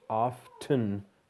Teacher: it's going to sound like off, like you're turning something off, and then either ton or tun. If you can shorten it up to tun, so there's just often, that's best.